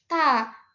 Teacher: lidah kita itu ditaruh di gusi ta. Selanjutnya ee dari daerah artikulasinya itu masih infijar atau adanya letupan kecil.